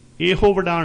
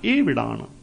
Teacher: ਉਹ ਵੇਖੈ ਉਹਨਾਂ ਨਦਰ ਨਾ ਆਵੈ ਬਹੁਤਾ ਇਹ ਵਿੜਾਨ, ਇਹੋ ਵਿੜਾਨ ਨਹੀਂ ਬੋਲਣਾ, ਇਹ ਵਿੜਾਨ। ਸੋ ਇੱਦਾਂ ਜਿੱਥੇ ਵੀ ਇਹ ਇੱਕ ਵਚਨ ਪੜਨਾਮ ਹੈ, ਉੱਥੇ ਵੀ ਹਾਹੇ ਦਾ ਔਂਕੜ ਨਹੀਂ ਬੋਲਦਾ। ਉਹ ਬੋਲਣਾ, ਉਹ ਨਹੀਂ ਬੋਲਣਾ, ਇਹ ਬੋਲਣਾ, ਇਹੋ ਨਹੀਂ ਬੋਲਣਾ।